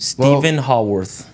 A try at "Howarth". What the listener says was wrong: Howarth. Like the R keeps coming out before the W.